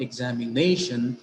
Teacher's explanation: In the word examination, it is nay, the syllable nay, which is receiving accent or stress.